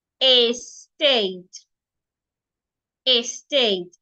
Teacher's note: you're stressing the second syllable state